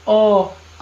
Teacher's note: आ कंठ की सहायता से बोला जा रहा है